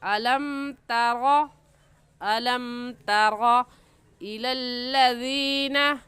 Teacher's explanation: जल्दी से पढ़ लेंगे अलम तरा, ता को बारीक पढ़ेंगे। बारीक करने का तरीका कि आपके दोनों होंठ फैल जाएं, और रा को मोटा पढ़ेंगे। मोटा करने का तरीका कि आपके दोनों होंठ गोल हो जाए। तो इनमें फ़र्क करके पढ़ेंगे। · ता की जगह त्वा पढ़ना दुरुस्त नहीं है। ऐसा ना हो कि रा को मोटा करते करते ता को भी मोटा कर दें और ता की जगह त्वा बन जाए, ये गलत हो जाएगा।